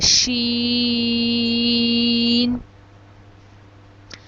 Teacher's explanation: جب ہماری زبان کا درمیان اوپر تالو کے درمیان سے لگے گا تو شین ادا ہوگا۔ شین کو ہم 5 الف کے برابر لمبا کرتے ہیں، شین۔ اگلا حرف ہے صاد۔